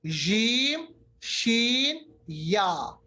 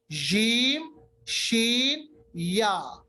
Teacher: जबान का दरमियानी हिस्सा ऊपर के तालु के साथ मिल जाता है